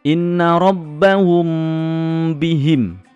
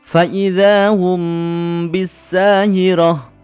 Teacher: Mem sukun dibaca samar di bibir dan berdengung. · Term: ikhfa syafawi